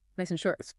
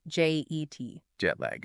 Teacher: Jet lag, two distinct words, stressed pretty evenly.